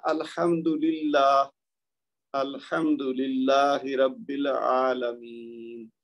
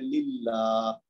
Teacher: تو یہ لام سے پہلے جو ہے للہ کا، اس کے نیچے چونکہ زیر ہے تو لہذا یہ باریک پڑا جائے گا